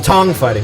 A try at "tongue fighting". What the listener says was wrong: You said tong.